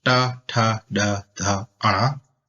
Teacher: your tongue is touching just where your gums and teeth meet at the top of your mouth